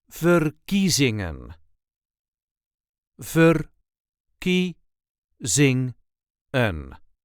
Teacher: There is a light emphasis on the second syllable